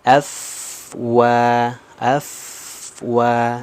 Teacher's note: jadi dialirkan Tidak ada pantulan huruf di situ Kenapa karena sifatnya rhah bukan qolqala